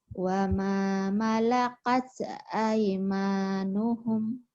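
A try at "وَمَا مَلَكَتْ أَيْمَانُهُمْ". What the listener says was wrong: Jangan kayak keselak. Jangan digituin. Wa ma malakat aimanuhum.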